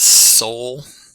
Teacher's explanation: O vowel's in the middle of our chart on the right, so that makes it a mid back vowel